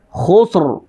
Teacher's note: ان الانسان لفی خسر، را ساکن اس سے پہلے، سین ساکن اس سے پہلے، خا پر پیش ہے تو را موٹی ہوگی